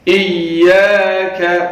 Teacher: یا کے اوپر تشدید ہے، حمزہ کو یا کے ساتھ ملائیں گے اور سختی کے ساتھ یا کو پڑھیں گے